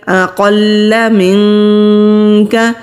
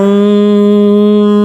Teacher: نون ساکن کے بعد کاف آ رہا ہے، یہاں پر بھی اخفا ہوگا اور کاف باریک ادا کریں گے